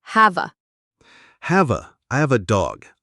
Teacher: we link the V in have to the A. It sounds like have a.